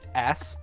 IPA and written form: æs (ass)